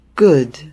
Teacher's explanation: Não é nem O e nem U. É um som entre esses dois sons de vogais.